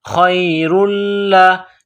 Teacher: لام کے اوپر تشدید ہے تو لام میں سختی کرنی ہے